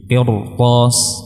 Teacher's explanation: Begitu pula qirtas, kaidah asalnya adalah tipis, ada sukun sebelumnya, huruf ra-nya sukun, sebelumnya kasrah, qir. Namun karena setelahnya ada huruf isti'la maka ditebalkan menjadi qirtas